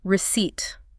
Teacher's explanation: There is a giant P right in the middle of this word. There is indeed a P, and it is 100% entirely silent. You must pretend the P is invisible.